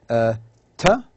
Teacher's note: the tongue touches the, you know, the alveolar, the alveolar ridge, which is the rough area behind and above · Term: alveolars